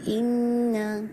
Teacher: انا نون پہ موز کمپلیٹ کرنا ہے جس کو اکمل غنہ کہتے ہیں